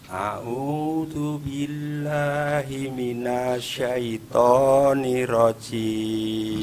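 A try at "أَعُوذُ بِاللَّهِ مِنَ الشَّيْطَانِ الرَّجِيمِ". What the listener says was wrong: Yang pertama minash. Nah, nirrajim. Ingat ya, shinnya sama ra-nya tasydid.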